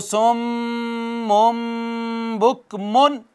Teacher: میم ساکن کے بعد با آ جائے تب بھی آواز کا اخفاء کر لیتے ہیں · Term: اخفاء شفوی